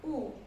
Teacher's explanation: ketika dhammah, dia munyung, munyungnya itu sempurna